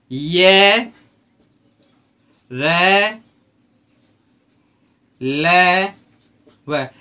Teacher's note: जब इन वर्णों को हम बोलेंगे तो अपने गले के अंदर ऐसा महसूस होगा कि कुछ कंपन सा पैदा हो रहा है। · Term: अंतःस्थ व्यंजन